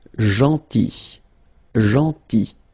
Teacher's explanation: So remember this final L is not pronounced.